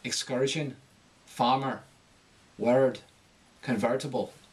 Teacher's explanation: the hard R vowel rises in pitch